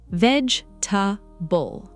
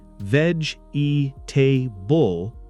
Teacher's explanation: Instead of four clear syllables, it becomes closer to three.